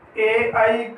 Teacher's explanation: ए और आई जो है ये दोनों कंठ तालव्य हैं, यानी कंठ और तालु दोनों की सहायता से बोले जाते हैं, उच्चारित होते हैं।